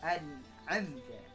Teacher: Cara membacanya harus jelas, nunnya harus jelas, nun sukunnya an'amta, ya. Tidak boleh disamarkan atau didengungkan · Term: izhar khalqi